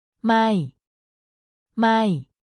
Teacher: it's pronounced with a falling tone so your voice goes down slightly when you say it